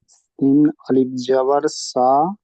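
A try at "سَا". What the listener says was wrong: টান দিয়ে, টান দিয়ে একটু টান দিবেন।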